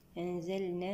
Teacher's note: اللام ساكنة نأتي لها بزمن البينية